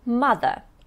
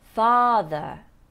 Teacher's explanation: What you need to pay attention to is long r in the first word. So the female parent is mother, short, but the male parent is father. A bit longer, yes?